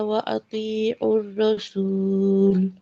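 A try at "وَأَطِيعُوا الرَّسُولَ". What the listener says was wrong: র র র, কি করেন? ওয়া আতিউর রাসূল, রসুল হচ্ছে রসুল, রো না, র সোজা।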